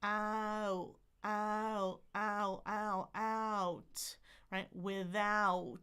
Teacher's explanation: See if you can feel your tongue kind of sliding back for that dip thong. A dip thong is two vowels together. · this diphthong is interesting because it starts with your tongue in the middle, and then it goes to the back.